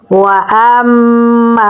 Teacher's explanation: हमज़ा को मीम के साथ मिलाएंगे क्योंकि मीम के ऊपर तशदीद है तो यहाँ पर हम गुन्ना करेंगे। आगे अलिफ मद्दा है तो इसे हम लंबा पढ़ेंगे तो पढ़ा जाएगा वअम्मा।